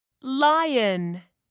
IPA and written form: ˈlaɪ.ən (lion)